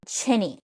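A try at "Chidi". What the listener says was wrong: No, with a D. Like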